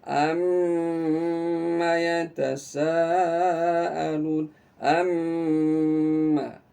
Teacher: Jadi bedanya adalah tidak keluar udara dari mulut kita tapi keluar dari hidung karena gunnah.